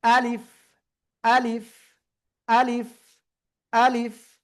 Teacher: এবার দেখেন এই যে আলিফ অক্ষর, প্রথমে আ, শেষে আসতেছে লিফ। আলিফ কোনো টেনে পড়া যাবে না